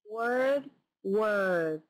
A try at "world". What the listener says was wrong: Okay, yeah, I'm not hearing the L in world. Okay, so I'm guessing what's going on here is your tongue isn't getting up there behind your front teeth. Oh, world. Say, try a different sound, just an L sound.